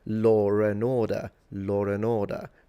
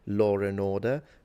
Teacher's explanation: You're putting an R in there because it makes it easier to say even though there is no R in law. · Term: phantom R